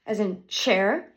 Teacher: The place is the roof of my mouth. The manner is a fricative, and it is an unvoiced sound.